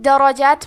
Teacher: حرف الراء پہ زبر ہے تو یہاں راء کا حکم ہے تفخیم، تو ہمیں حرف الراء کو موٹی آواز میں پڑھنا ہے